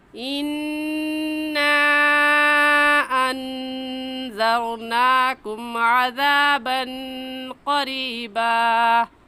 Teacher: اس مد کو 3 الف کے برابر کھینچیں گے، نہ اس سے کم اور نہ ہی اس سے زیادہ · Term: مد منفصل